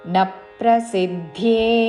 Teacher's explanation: నా హ్రస్వము దాని మీద ఆఘాత పక్కనున్న సంయుక్త అక్షరంలోని ప ద్విత్వం చేస్తూ